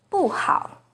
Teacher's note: it's the fourth falling tone in buhao